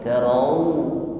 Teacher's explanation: Jadi ada huruf lin di sini kita ucapkan dengan landai tarau. Kita himpun bibir kita sehingga bunyinya benar-benar u, tidak miring tarau, bukan tarau tetapi tarau.